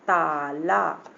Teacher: जब आ की मात्रा बोलते हैं तो हमारा पूरा मुंह खुल जाता है ना